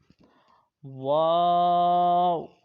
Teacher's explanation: آخری لائن کا پہلا حرف واو، یعنی حروف شفویہ، اور اس کا مخرج ہے دونوں ہونٹوں کی گولائی سے ادا ہونا، تو دونوں ہونٹوں کی گولائی سے یہ ادا ہوتا ہے واو۔